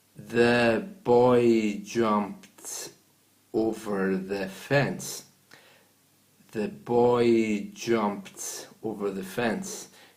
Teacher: it's very hard to see where the words are separated because it's all done in one breath